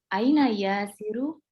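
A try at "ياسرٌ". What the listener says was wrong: Yasirun. Bukan karena nggak ada alnya, karena dia nama laki-laki Arab. Ya, nama laki-laki Arab, makanya dia pakai tanwin. Setiap nama laki-laki Arab ada tanwinnya. Muhammadun, Yasirun, Hamidun, Mahmudun, ya kan? Itu pakai tanwin semuanya. Yuk, aina Yasirun.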